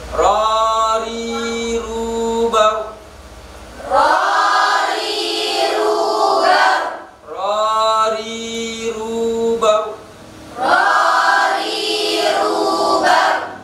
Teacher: Ro ketika disukun huruf sebelumnya berharokat fathah maka rohnya itu dibaca tebal baru. Berbeda dengan kalau huruf sebelumnya berharokat kasroh maka dibaca tipis.